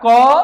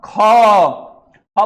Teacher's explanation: ख बोलने में ज्यादा हवा निकल रहा है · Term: महाप्राण